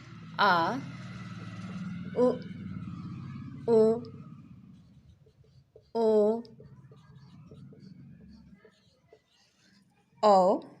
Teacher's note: ये पांचों पश्च भाग से, जिह्वा के पश्च भाग से बोले जाते हैं। अर्थात जिह्वा के अग्रभाग से ई, ए, मध्य भाग से अ तथा पश्च भाग से आ, उ, ओ और औ बोले जाते हैं।